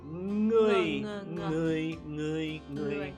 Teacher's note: NG at the beginning, it's a Ng. It's in the back of your throat.